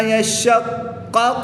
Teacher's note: شین کے اوپر بھی تشدید ہے اور قاف کے اوپر بھی تشدید ہے، اور جب حروف قلقلہ مشدد ہوں تو ان کو خوب جماع کے ساتھ ادا کرتے ہیں، یہاں پر خوب قلقلہ کر کے پڑھیں گے اور اس کی تشدید کو بھی خوب ظاہر کر کے پڑھیں گے۔